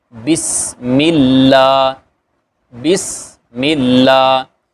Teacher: اب یہاں پہ ہم نے صفات عارضہ جو پڑھی تھی، اس میں ہم نے پڑھا تھا کہ اللہ کے لام سے پہلے اگر زیر ہو تو وہ لام باریک پڑھتے ہیں